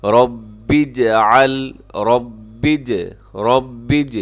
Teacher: ربی میں را موٹا پڑا جائے گا اور اس کو آگے ہم ملائیں گے۔